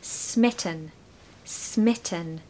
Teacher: We want a short I and stress the first syllable. · There's a schwa in the second syllable.